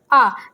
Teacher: जब हम आ बोलते हैं तो इसमें क्या होता है कि हमारा जो मुख है वो ज्यादा खुलता है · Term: विवृत